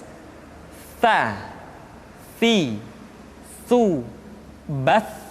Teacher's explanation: bass atau lidah yang keluar terlalu panjang jadi yang tepat adalah ujung lidah disentuhkan dengan dinding dua gigi seri bagian atas